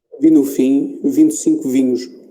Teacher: temos que lembrar para pôr a vogal pelo nariz